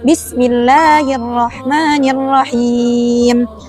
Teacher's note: pada lafaz Allah dan Ar-Rahman itu cukup dipanjangkan 2 harokat atau 1 ayunan